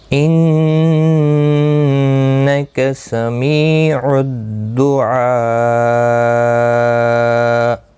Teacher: الدعاء یہاں پر 3 سے 5 الف کے برابر کھینچ کر وقف کریں گے اور مد العارض وقفی ہوگا.